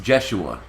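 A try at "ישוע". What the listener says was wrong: No, Yeshua, with a Y. It wasn't pronounced Jeshua because J wasn't invented, so J you couldn't use. No, you couldn't use it as silent because it wasn't invented. How can you use a J when it wasn't invented?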